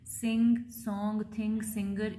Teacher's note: ये वॉइस्ड है क्योंकि इसमें वाइब्रेशन होता है, वेलर है, प्लॉजिव है, नेजल है क्योंकि इसमें ये जो ऑरल पैसेज है वो ब्लॉक होता है।